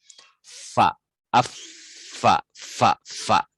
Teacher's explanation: Jadi di perut bibir yang bawah ada huruf fa bersamaan dengan ujung gigi seri yang dia tuh nampak.